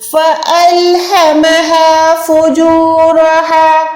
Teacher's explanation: دونوں ہا جو ہے سینے والی ہیں, یہاں پر آپ جو ہے حلق کو زور نہیں دے سکتے